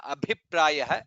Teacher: Then satya dharma parayanah, dha is mahaprana, note that. In the second line abhiprayah, bha is mahaprana